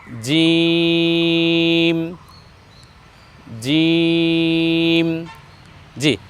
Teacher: এ বর্ণ আমরা উচ্চারণ করব জিহ্বার মধ্যখান তার বরাবর উপরে তালু সঙ্গে লাগিয়ে